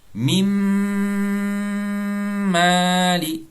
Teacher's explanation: Maintenant, nous avons mim qui nous fait un idgham kamila, un idgham complet. Noun disparaît complètement.